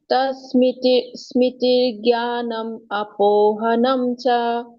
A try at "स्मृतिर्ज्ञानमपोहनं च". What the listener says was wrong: हाँ, ये वर्ड एक ही कर दो, अलग ब्रेक मत करो। ज्ञानम अपो मपो, ज्ञानम अपो।